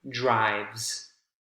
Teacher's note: you had the s to drive becomes drives one syllable and the s sounds like a z in that case